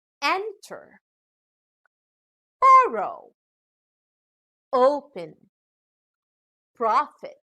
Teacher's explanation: These are two-syllable verbs where the final syllable contains a short vowel, so the stress is given on the first syllable.